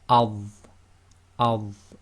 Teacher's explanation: And the dha will be adh, adh. So that's tafkhim, it's heavy, lifting the back of the tongue up, a bit more full mouth.